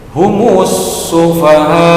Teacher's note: mim sukun bertemu dengan huruf H, dikarenakan H ini bukan huruf mim dan ba, maka disebut idhar safawi. Cara membacanya bagaimana? Iya, dibaca jelas, tidak mendengung pendek.